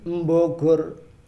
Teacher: Kalau orang Jawa itu kalau baca ba itu di depannya dikasih m, itu salah.